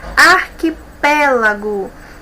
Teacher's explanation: nós temos aqui a antepenúltima sílaba como a mais forte